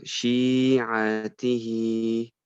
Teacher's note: you kind of have to stretch the sheen a little bit more. So shi'atihi.